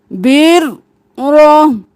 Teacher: را کو 2 بار، را کو موٹا بھی پڑھنا ہے